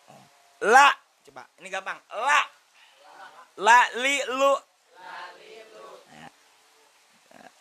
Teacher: ujung lidah bertemu dengan langit-langit yang berhadapan dengannya